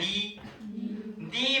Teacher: 니 발음을 하면 혀 끝이 치조 쪽을 툭 치고 내려오면서 열어주면서 소리가 나요. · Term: 니은 발음